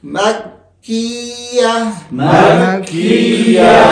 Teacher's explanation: کاف کے اندر آواز بند ہوگا، دوبارہ جاری ہوگا سانس